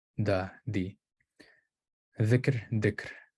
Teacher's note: So fortition is common with interdentals